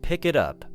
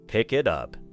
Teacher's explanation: The final K in pick connects to the vowel at the beginning of it. Then the final T in it connects to the vowel at the beginning of up.